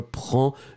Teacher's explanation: You don't pronounce the final D.